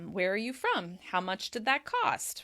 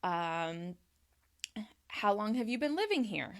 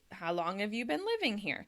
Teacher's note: It drops at the end because I'm inviting the person to answer and give me more information.